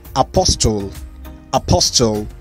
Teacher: in british english the t is silent